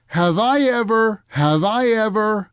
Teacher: usually when we use that phrase in a question the stress is on i